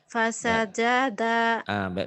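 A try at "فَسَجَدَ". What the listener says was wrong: Coba yuk. Jangan dipanjangin. Karena nggak ada yang panjang.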